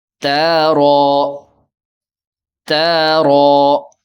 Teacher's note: دونوں حروف 2 حرف والے کم کم لمبا کریں گے اور را کو پر کریں گے